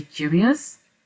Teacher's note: voilà en prononce plus lentement on perçoit on entend quand même on arrive à entendre la diphtongue juste après le ou